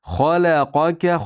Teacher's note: Xolaqoka xo yug'on la ingichka qof yug'on ka ingichka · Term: yug'on harflar